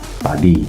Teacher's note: dalam huruf P itu dia bibirnya tertutup rapat dan dia akan mengeluarkan udara tanpa suara